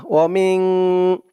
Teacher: মিং গুন্না হবে, ইকফা গুন্না।